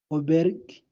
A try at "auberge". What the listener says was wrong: yeah, you're almost there, but it's auberge. Remember that letter we said letter J. J. The sound was J. So auberge. Auberge. So we say auberge.